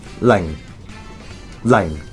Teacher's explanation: starting at a low pitch and going even deeper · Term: fourth tone